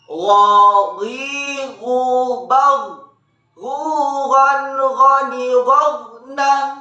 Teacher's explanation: Huruf Gha salah satu huruf yang harus terdengar menebal suaranya. Caranya, pangkal lisan angkat ke belakang.